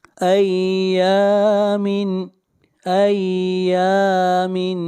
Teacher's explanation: یا کو کھینچ کر پڑھیں گے ایک الف کے برابر، یہاں پر الف مدہ ہے۔